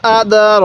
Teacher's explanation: খারা জবরটা থাকবে ওই হরফটা আমরা এক আলিফ টেনে পড়বো